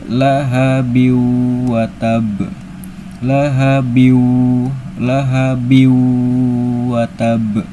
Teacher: Jadi, tanwin kasrah tidak lagi dibaca bim, tapi langsung ke biwu sambil berdengung. Bighunah dengan dengungan. Jadi, dengungannya ditahan. Boleh dua, boleh tiga, boleh empat harakat. · Yang dimasukkan itu adalah tanwin kasrah ke huruf wau. Jadi, tanwin kasrah tidak lagi dibaca bim, tapi langsung ke biwu sambil berdengung. Bighunah dengan dengungan. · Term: idgham gunah